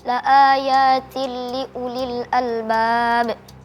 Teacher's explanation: Hukumnya idgham bila gunnah karena kasratain bertemu dengan huruf lam dibaca lebur, cuman satu.